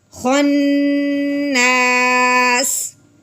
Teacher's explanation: وقف کی صورت میں اس کو ساکن کر دیں گے تو سیٹی کے بعد نکالیں گے